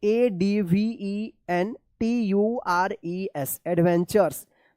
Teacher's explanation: T के बाद U है और लास्ट में RE है, तो क्या है कि इस TU का च उच्चारण होता है